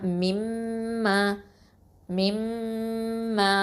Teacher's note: அந்த நூன் வந்து அப்படியே இணைஞ்சிரும். அப்போ என்ன பண்ணுவோன்னா மிம்ம மிம்ம அப்படின்னு சொல்லுவோம். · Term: இதுகாம் பில் கொன்னா